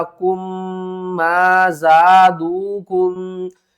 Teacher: میم ساکن کے بعد اس طرح اگر میم مشدد آ جائے تو اس کے اوپر ہم نے غنہ کر کے پڑھنا ہوتا ہے